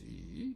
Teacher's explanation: it goes down and goes up again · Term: third tone